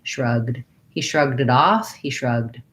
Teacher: we don't do any vowels on there we just go right from the g to the d